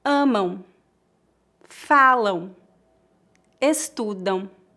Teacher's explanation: Amam, falam, estudam. Note que não tocamos os lábios para pronunciar o M em final de palavras.